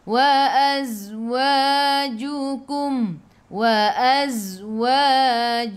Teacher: zai sifat hurufnya safir. Jadi kena bunyikan z, bunyi lebah.